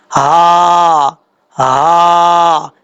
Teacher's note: ہا جو ہے یہ بھاری ساؤنڈ کے ساتھ پڑھا جائے گا، اور یہ حلق سے ادا ہوتا ہے، اور یہ وہ اس حلق سے ادا ہوتا ہے جس حلق کا تعلق سینے کی طرف ہے، اس لیے اس کو بھاری ساؤنڈ کے ساتھ پڑھا جائے گا، ہا ہا، اس طریقے سے۔